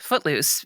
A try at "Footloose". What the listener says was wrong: but you're calling it Footloose because you're saying it it as if you were singing it in the correct rhythm of everybody cut Footloose. You're emphasizing the loose.